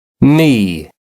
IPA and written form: miː (me)